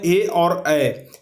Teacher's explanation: तो ऐसे में आता है ए और ए। सिर्फ ए और ए दो ही ऐसे वर्ण हैं जिसका उच्चारण कंठ और तालु दोनों मिल करके होता है। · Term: कंठ तालव्य